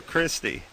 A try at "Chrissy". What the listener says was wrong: There's no T. It's just Chrissy.